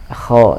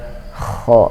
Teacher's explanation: Huruf kha adanya di atas tenggorokan bagian atas ya, atau tenggorokan atas, kha. Dan suara kha ada sedikit air yang mengaruhi suara sehingga kha, ya, kha suaranya seperti itu.